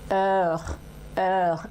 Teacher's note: Heure, j'ouvre bien la bouche, heure, et ma bouche est un peu arrondie, heure, heure, et j'ai le son re là qui vient de la gorge